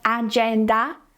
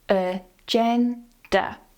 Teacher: The stress is on the second syllable here, uh and duh at the end are both weak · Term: schwa